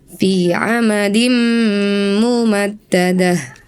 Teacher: Sebelumnya di Al-Humazah, Anda membaca "fi amadim mumaddadah." Ada idgham bighunnah di sana, ya. Terdapat kasratain diikuti oleh mim yang harus ditahan selama dua ketukan disertai dengan suara sengau.